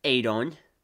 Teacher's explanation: she put emphasis on the second syllable in his name and changed the e to an o pronouncing his name adon instead of the way it was supposed